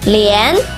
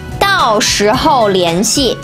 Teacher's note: 联 second tone, 系 fourth tone.